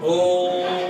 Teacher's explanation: प्लुत्व स्वर जिन स्वरों के उच्चारण में दीर्घ स्वर से भी ज्यादा समय लगता है